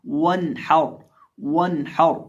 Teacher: वाव को पढ़ते वक्त होंठों को गोल करके पढ़ेंगे।